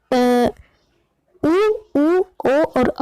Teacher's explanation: जब आप उ, ओ और औ का उच्चारण करेंगे तो आपके जो होठों का आकार है वो गोल हो जाएगा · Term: व्रतमुखी स्वर